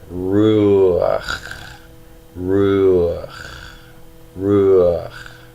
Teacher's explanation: It is just a little helping vowel to get you from the long vowel called shurik to the guttural produced in the back of the throat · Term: furtive pathak